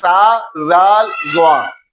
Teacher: زبان کی نوک اور اوپر والے دانتوں کا اندرونی کنارہ، اگر زبان کی نوک اوپر والے دانتوں کے اندرونی کنارے سے لگے تو یہ تینوں حروف ادا ہوتے ہیں، سا، زال، زوا۔ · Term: حروف لساویہ